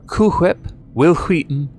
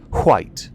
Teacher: It's much easier, less throaty and more breathy.